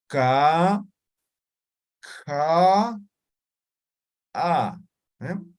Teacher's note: Velares. Simple, aspirada, explosiva.